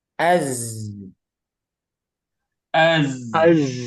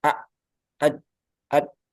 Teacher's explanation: Az jangan seperti syiddah kalau syidah kan tertahan a ad ad Nah kalau Zai mengalir suaranya